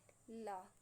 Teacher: ऐसे व्यंजन जिनके उच्चारण में जिह्वा हमारी मसूड़ों को छूती है और हवा का प्रमुख वेग जिह्वा के आसपास से निकल जाता है, ऐसे व्यंजन को हम लोग पार्श्विक व्यंजन कहते हैं।